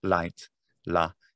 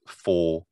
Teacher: Whereas the light la is quite clear, whereas full it's very very velar.